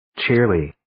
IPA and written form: tʃiːrliː (Cheerly)